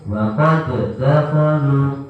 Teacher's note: Wa qad dakhalu. Ini meskipun bentuknya ada qalqalah, tapi ketemu dengan huruf yang sama, akhirnya diidghamkan, nggak boleh mantul